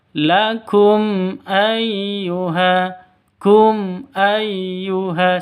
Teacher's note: mim matinya jelas hamzahnya juga jelas Kenapa izhar syafawi jelas terang tidak boleh disentak dan juga tidak boleh didengungkan